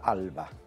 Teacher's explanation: porque fonéticamente tiene la vocal más clara, más abierta, que es la A, repetida 2 veces. Luego tiene 2 consonantes muy sonoras, una líquida y una bilabial, que potencian mucho la apertura de la A